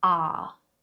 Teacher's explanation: It's just an open R vowel sound, a long vowel sound, R, like in the word car. R. Just open your mouth, keep your tongue down and say R.